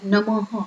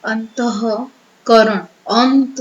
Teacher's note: જો ઉચ્ચારણ પાછળ હ થતો, જેમ કે એક્ઝામ્પલ તરીકે નમઃ, તો મની પાછળ બે મીંડા આવે એનું આપણે ઉચ્ચારણ હ તરીકે કરીએ નમઃ. તો એવું થતું હોય તેની ઉપર આપણે એને ગુરુ કરી દેવાનું.